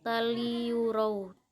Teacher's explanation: karena ada huruf tanwin bertemu dengan huruf lam, cara membacanya masuk dengan tidak mendengung